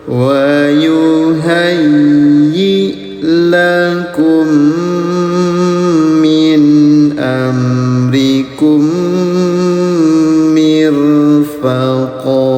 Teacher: Bunyi tanwinnya dipanjangkan selama 2 harokat ya.